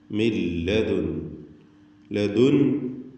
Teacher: ലതുലഖൽ ഖുർആന മിൻ ലദുൻ ഹകീമിൻ അലീം. മിൻ ലദുൻ, മിൻ എന്നതിലെ സാക്കിനത്തായ നൂൻ ശേഷം ലാമ് വന്നതുകൊണ്ട് പൂർണ്ണമായും ലാമിലേക്ക് അതിനെ ലയിപ്പിച്ച് മണിക്കാതെ ഉച്ചരിക്കണം.